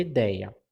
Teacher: ideia eu tenho um ditongo aberto porque é um som forte